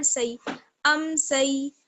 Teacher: یا لین ہے، یعنی یہاں پر یا کو کھینچنا نہیں ہے، جلدی سے پڑھیں گے. سین یا زبر سی ام سی.